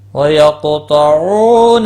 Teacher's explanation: قاف مستعلیہ بھی ہے اور اس پر قلقلہ بھی ہوگا، ساکن ہے۔ تو بھی مستعلیہ ہے، پور پڑھا جائے گا۔